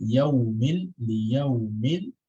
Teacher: So the mim and the lam al-qamariyah is connected together.